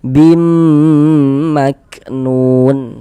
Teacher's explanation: Kemudian didengungkan. Jadi di bagian bimnya itu suaranya itu kita tahan, kita panjangkan sejenak sepanjang 2 harokat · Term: gunnah